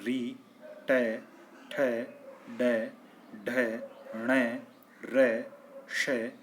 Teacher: तीसरा उच्चारण स्थान आता है मूर्धा जिसके अंतर्गत ऋ ट ठ ड ढ ण र श वर्ण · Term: मूर्धन्य वर्ण